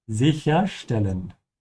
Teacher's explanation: make sure you pronounce the ST like a sh sound because the S comes before a T